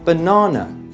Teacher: in the word banana we got two schwa sounds in the beginning and the end of the word and the second syllable is stressed so you don't say be na na or be na nae